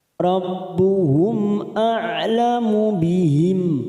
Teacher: mim sukun bertemu hamzah, idhar safawi, kita baca jelas. Rabbuhum a'lamu bihim, bihim kita baca jelas, kita wakaf pada tanda al-waqfu aula.